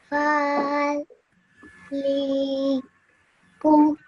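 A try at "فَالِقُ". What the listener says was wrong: But this lam over here, you stretched out for too long. It's only a simple kasra underneath it, so only said for 1 second. So, faliqu.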